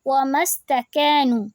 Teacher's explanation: ہم میم کو سین سے ملا رہے ہیں، میم پہ جزم کی وجہ سے